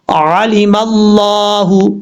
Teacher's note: یہ لفظ اللہ ہے، لفظ اللہ سے پہلے میم کے اوپر زبر ہے، اس لیے اس کو پر پڑھا جائے گا، یعنی موٹا پڑھا جائے گا